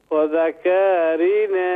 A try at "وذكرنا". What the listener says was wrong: كاف کو شارٹ کریں كاف کو شارٹ کریں وذكرنا